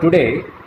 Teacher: here the DAY, second syllable in the word, is stressed. So we utter this second syllable with greater breath force.